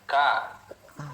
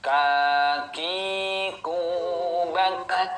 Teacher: mengucapkan huruf K ada nafas yang mengalir